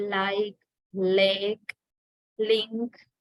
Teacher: tip of the tongue is the active articulator